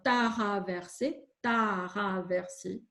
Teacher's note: vous ajoutez justement une voyelle entre le te et le re